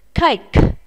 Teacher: các em phải phát âm âm k này ở cuối của từ nhé. Chúng ta sẽ phải bật hơi ra.